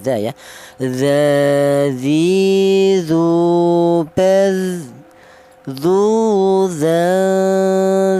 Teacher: Huruf dzal ini keluarnya huruf berasal dari ujung lidah menyentuh ujung gigi sari atas ya, dza ya.